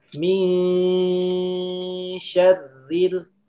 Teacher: Dibacanya dengan cara samar. Menyamarkan huruf nun, ancang-ancang mau ke huruf shin. Huruf shin kan dia di tengah lidah, naik ke atas ya, di sini nih. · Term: ikhfa hakiki